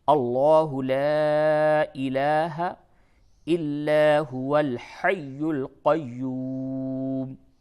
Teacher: لا الہ غلط ہو جائے گا، اس پہ تھوڑا سا مد کریں گے